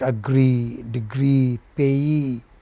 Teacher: They take main stress on the final syllable, no matter whether they are noun or whatever.